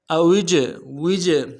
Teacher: جیم کے اوپر جزم ہے، قلقلہ ہوگا